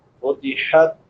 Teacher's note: چھوٹی ہا ہے، حلق کے درمیان سے ادا ہوتی ہے